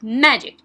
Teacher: okay so ma is stressed